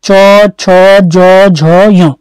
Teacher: जिस स्थल को आपकी जीभ टच करती है चौवर्ग के अंतर्गत, तो वह क्षेत्र कहलाता है हमारा तालव्य।